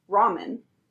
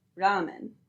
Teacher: For an English speaker, our instinct is to pronounce this as “ɹɑmən”, but in Japanese it is pronounced more like “ɾamen”.